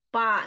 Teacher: Fa-nya jadi seperti huruf mim, ketemu bibir luar dua-duanya.